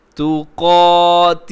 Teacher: پھر سنیے گا یا ایہا الذین آمنوا اتقوا اللہ، آگے حق، قاف کے اوپر تشدید ہے تو آپ یہاں پہ اس کو مضبوطی کے ساتھ آپ اس کو پڑھیں گے ایک لمحے کے لیے رک کے، ایسے نہیں کریں گے حقا نہیں بلکہ حق. آگے تقاتہ، قاف اس کے اندر موٹا ہے، باقی تینوں حروف جو ہیں وہ باریک ہیں. تقاتہ، ہی کو کھینچا ہے، کھڑی زیر ہے، کھڑی زیر کھڑا زبر الٹا پیش، اسے ہمیشہ تھوڑا سا کھینچ کے پڑھتے ہیں.